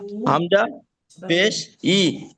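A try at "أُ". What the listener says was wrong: ই পড়েছিলেন তো এটা? এটা ই কেন পড়লেন তাহলে?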